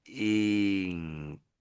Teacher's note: when they make the N, and they see that there's a K, people tend to raise their tongue towards the back · It sounds like you're lifting your tongue at the back. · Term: NK sound